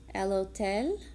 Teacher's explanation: But the difference is that in Spanish, you're not going to say the H sound. So when you say either hotel or hospital, you're really starting on the O sound. The H is always silent in Spanish.